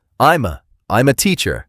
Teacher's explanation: notice how I'm a sounds like one single word.